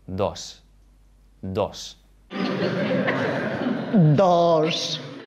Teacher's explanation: When you see the Spanish letter D, it's pronounced in different ways depending on the environment. If there's no sound before the letter D, it's pronounced as a th sound, where the tongue is against the back of the teeth.